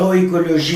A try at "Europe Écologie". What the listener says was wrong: Europe, pas Euro.